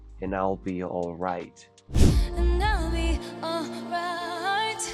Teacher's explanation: Y también podemos escuchar que el sonido de la D en la palabra anterior, que es and, se está omitiendo, lo cual nos deja con una palabra que termina en N y que también esa N se está uniendo a la vocal de la siguiente palabra, que es I'll.